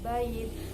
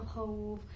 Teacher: waw atau ya terletak setelah fathah, wakofnya dibaca panjang, disebut mad lain. Panjangnya boleh 1, 2, atau 3 alif.